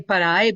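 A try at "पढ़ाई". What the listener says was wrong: No, so it's not a R sound, it's a D sound. So if you are saying yourself per rai, it's per high. Per dh. So you turn your tongue should kind of turn and touch the top of your yes per high. Okay, per hai. Okay, per high.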